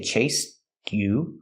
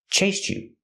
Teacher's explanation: You can make a stop T and say chased you. Or you can link the sounds and say chased you with a ch sound.